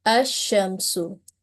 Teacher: So this is called the merging of lam or the idgham of lam, and this word will be pronounced as ash-shamsu. So you will have noticed that lam sound is completely merged while pronouncing this type of lam in a noun. And the other lam in this noun is carrying the sign, the mark of sukun, and this type of lam is read as a clear lam, or it is manifested, and this is called the manifestation of lam.